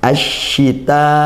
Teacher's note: ada alif lam tapi dibaca idgham Kenapa karena bertemu huruf syin huruf syin makhrajnya di lidah Tengah lidah lam juga di lidah maka karena makhrajnya dekat hukumnya idgham Syamsiyah